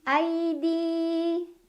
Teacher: Ai ada huruf lin karena ada ya sukun sebelumnya fathah. Cara bacanya dilunakan atau dilembutkan.